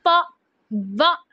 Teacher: फिर उसके बाद नेक्स्ट टाइम हमारे पास लिबियोडेंटल की अगर हम बात करें तो जब हम इनको प्रोड्यूस करते हैं ना, फ व, तो इन दो साउंड्स को जब भी हम प्रोड्यूस करेंगे हमारे जो अपर टिथ हैं और जो लोअर लिप है ये दोनों आपस में जुड़ेंगे और हम ये दोनों साउंड प्रोड्यूस कर सकते हैं।